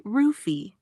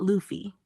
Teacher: So yeah, it's basically ruffy, not Luffy. Japanese doesn't naturally use an L sound. So foreign L becomes R. So what sounds like Luffy to us is actually rufi in Japanese phonetics.